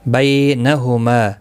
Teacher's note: یہاں کھڑی زبر بھی ہے، اس کے اوپر ایک الف کی مقدار کے برابر کھینچ کر بھی پڑھیں گے. بینہما بی یا لین ہے، تھوڑا نرمی کے ساتھ کھینچ کر ادا کریں گے